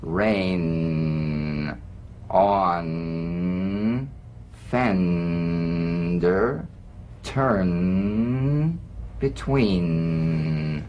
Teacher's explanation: the N is a nasal consonant made with the tongue blade to the upper gum Ridge its most resonant and it's well forward placed it's a melodic